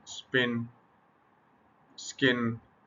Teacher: अच्छा अब जब यह वाक नहीं होती एस्पिरेशन पफ ऑफ एयर नहीं आता कब नहीं आता aspiration usually does not occur after स